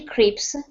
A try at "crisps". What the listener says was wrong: Salty crisps. 2 S's. Crisps. Like that.